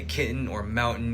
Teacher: pronouncing words like kitten with a glottal stop